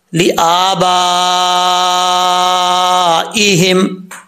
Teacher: اور ولا لآبائہم, حمزہ کے اوپر کھڑا زبر ہے, ایک الف کی مقدار لمبا کریں گے. با کے بعد الف ہے, الف کے اوپر مد ہے, اس مد کو مد متصل کہا جاتا ہے. 5 الف کے برابر اس کو لمبا کر سکتے ہیں